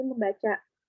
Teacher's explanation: pada dasar baca akan memunculkan bunyi sengau M yang semula tidak ada. Contoh, me plus baca jadi membaca.